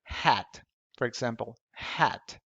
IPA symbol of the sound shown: ɛ